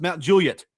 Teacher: Mount Juliet, the well-known suburb of Nashville, Tennessee, is phonetically pronounced Mount Juliet, stressing the first syllable. The Juliet is clipped short rather than drawn out like the Shakespearean Juliet, which is a dead giveaway that someone is an out-of-towner.